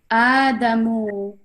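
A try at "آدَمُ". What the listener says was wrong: Yes. When you said mu, you did it long.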